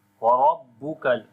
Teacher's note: Ra we read in heavy sound. On the ba we make strong voice.